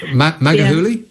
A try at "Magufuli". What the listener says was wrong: Magufuli. No. Gu. It's the gu which you can't pronounce properly. It's gu. Magufuli.